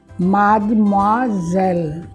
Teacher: a gente não diz o E também, a gente eleva a língua para o véu palatino